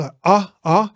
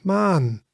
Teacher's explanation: it is pronounced as the a, but longer and lighter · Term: long vowel